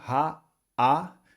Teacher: Então a segunda sílaba dessa palavra é o aleph e o kametz, uma sílaba aberta também. Então você vai pronunciar apenas o som de A, porque o aleph é a consoante muda.